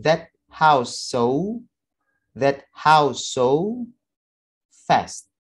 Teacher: Nah, kemudian di akhir dari suara house ada suara S. Ada suara S bertemu dengan suara S juga. Jadi double S. Same or similar sound. Kita drop salah satunya. Sehingga menjadi that house so fast.